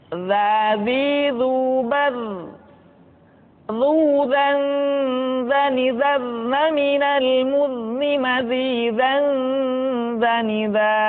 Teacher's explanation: Diucapkan dengan menyentuhkan ujung lidah dengan dinding dua gigi seri bagian atas seperti kita mengucapkan huruf sa. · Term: huruf za